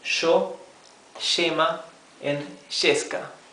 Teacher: In Argentina and Uruguay, those two countries, this case of the Y is pronounced sh.